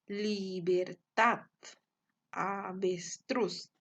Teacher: la sílaba tónica se encuentra en la última sílaba por lo tanto es una palabra aguda